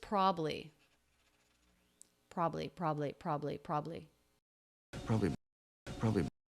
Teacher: he does a really common reduction where he drops the middle syllable